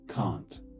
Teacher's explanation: But British people say can't. It's shorter, tighter, more in the nose.